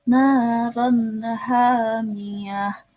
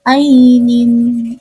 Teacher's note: kasroh tanwin bertemu dengan huruf hamzah, dibacanya izhar halki, jadi tanwinnya dibaca jelas